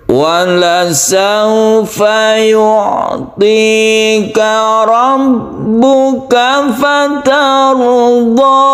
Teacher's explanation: Jadi meningginya ke belakang ya, ke belakang.